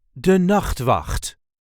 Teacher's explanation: There is a light emphasis on the first syllable of the second word.